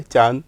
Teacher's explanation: तो आपने देखा कि नून गुन्ने की आवाज़ किस तरह से निकल रही है। नून की आवाज़ जो है पूरी नहीं आ रही, पूरा नून नहीं बोला जा रहा, नाक में बोला जा रहा है।